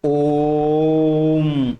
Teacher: ये जो ओ का उच्चारण है ये 3 बार तक खींचेगा, मतलब ओम इस तरह बोला जाएगा। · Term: प्लुत स्वर